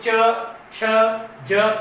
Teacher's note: जीभ हमारी जो जीवा है वो कहाँ टकराएगी? सीधी तालु से।